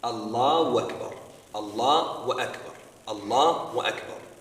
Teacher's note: they will take off that ha and replace it with what? A waw bil fath, or a waw fatha.